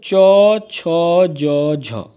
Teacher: च, छ, ज, झ, इन चारों वर्णों की जो उच्चारण ध्वनियाँ हैं ये तालव्य के माध्यम से होती हैं